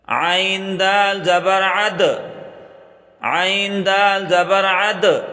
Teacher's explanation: عین کو گلے سے نکال کے پڑھیں اور دال پر قلقلہ کریں